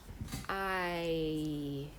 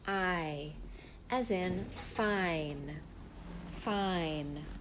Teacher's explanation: You start with the ah sound and you move to the e sound. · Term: diphthong